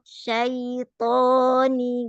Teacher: sebetulnya madlin itu bukan panjang ya, tapi halus, lembut, pengucapan dari fathah ke sukunnya itu lembut.